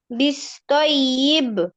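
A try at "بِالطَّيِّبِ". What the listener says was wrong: না, বিস না, এটা বিত। বিত্তয়িব, ইব, ইব, ধাক্কা দাও। বা মাখরাজ কি বলো? মনে করো, বা কোথা থেকে উচ্চারণ হয়? দুই ঠোঁট হতে হয় না আফিয়া? দুই ঠোঁট হইতে।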